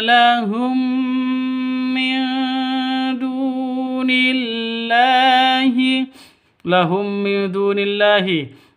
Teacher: mim mati bertemu dengan mim cara bacanya masuk ke mim Yang kedua disertai deng dengung karena bacaan idgham mimi atau idgham mis mislain seperti itu.